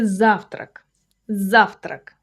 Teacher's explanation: This is a two-syllable word, завтрак, with a stress on the first syllable, clean and simple.